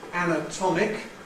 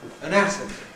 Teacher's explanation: We get [æ] at the beginning of ‘anatomic’ [ˌænəˈtɒmɪk], but [ə] at the beginning of ‘anatomy’